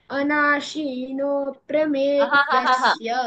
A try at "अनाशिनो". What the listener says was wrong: Anashino, no. It is short. Anashino, she is short.